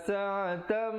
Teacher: Asalnya sa'atan, tapi bila bertemu mim, sa'atam 2 harakat. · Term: idgham bi gunnah